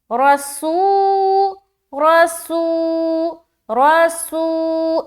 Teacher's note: सीन में सीटी भी जाहिर होनी चाहिए